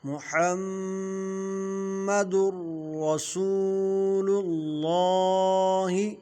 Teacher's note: در را جو ہے یہ را پر زبر آ رہی ہے، تو را موٹا ہوگا۔ رسو واو مدہ ہے، اس کو کھینچ کر پڑھیں گے۔ اللہ کا لام جو ہے یہ بھی موٹا ہوگا، اللہ کے لام سے پہلے زبریہ پیش ہو تو اللہ کے لام کو پر پڑھیں گے، یعنی موٹا پڑھیں گے۔ · تنوین کے بعد حروف یرملون میں سے را آ رہا ہے، تو یہاں ادغام بلا غنہ ہوگا، یعنی غنہ نہیں کریں گے۔